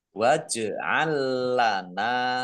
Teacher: lam sukun bertemu dengan huruf lam idgham mutamasilain